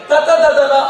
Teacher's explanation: ನೀವು ಹಲ್ಲಿಗೆ ನಾಲಿಗೆಯನ್ನು ತಾಗಿಸಿದರೆ ತದನ ಅನ್ನೋ ಅಕ್ಷರಗಳು ಬರ್ತವೆ